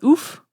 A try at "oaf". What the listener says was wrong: It's oaf. It's not oof. You don't say, you don't call people a big oof. He's an oaf.